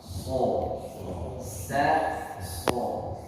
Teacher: Tetapi sad bagian tengah lidahnya sedikit melengkung ke bawah. Ini namanya itubaq. Itubaq ini adalah bentuk lidah yang melengkung ke bawah atau seperti kawat untuk membuat suaranya ke atas.